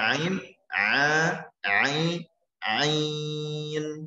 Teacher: seperti terasa tersangkut sedikit ya di bagian tengah pengorokan. Nah, memang harus ditekan sedikit.